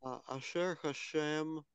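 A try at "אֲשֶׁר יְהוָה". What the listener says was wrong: Нет, это не шем, ашер и е, ашер и е.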